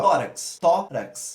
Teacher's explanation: Então a gente tem 2 sílabas e a sílaba tônica é o tó, tornando assim então uma paroxítona.